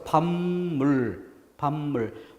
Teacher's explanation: 그래서 첫 번째 글자가 밥 이렇게 비읍으로 발음되는 게 아니라 뒤에 미음 때문에 영향을 받아서 밥물, 밥물. 원래 비읍이었던 것이 미음으로 바뀝니다. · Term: 비음화